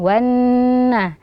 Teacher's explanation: Wan naha, di sini ada huruf nun yang bertasydid, ya, jadi wajib dibaca dengung